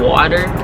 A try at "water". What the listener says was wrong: There's no D in water.